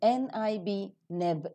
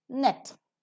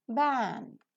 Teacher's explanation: and the vocal cords vibrate while the sound is produced so the three term label for n as in nib nib is voiced alveolar nasal